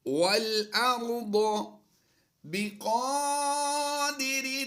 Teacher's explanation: ضاد اور را کی آواز پر کر کے دیں گے